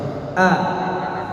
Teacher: hamzah harus jelas dari pangkal tenggorokan, ya. Pangkal tenggorokan itu di pita suara.